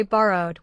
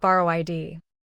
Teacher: Borrow ends with a voiced r sound, so the ending is d. Say borrowed with two written syllables, but one short d ending, not borrow id. The word remains smooth because the base already contains its own vowel pattern.